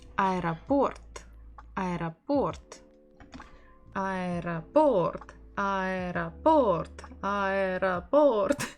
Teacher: So we stress port, port. The final O is stressed. It means the one in the middle.